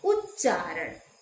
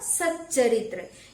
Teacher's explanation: त का मेल यदि च से होता है तो वह च में बदल जाता है। जैसे है उत प्लस चारण, क्या हो जाएगा, उच्चारण, यानी त च में बदल गया।